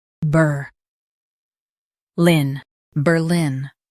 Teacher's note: Emphasize ber and keep lin strong.